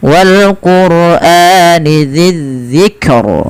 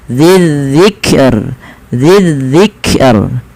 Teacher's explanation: Dan rnya dibaca dengan tipis. Kenapa? Karena sebelum huruf yang dimatikan itu ada huruf kasrah.